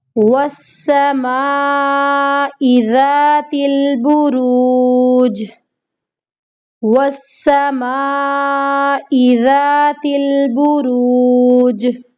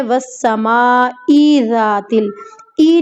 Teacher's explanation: اب یہاں پہ ہماری غلطی ہوتی ہے، ہم پڑھ دیتی ہیں والسماء ذات ال، ای نہیں پڑھنا، حمزہ کو بالکل بھی نہیں کھینچنا